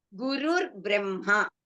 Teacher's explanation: we say that Visarga becomes Refa, Rakara.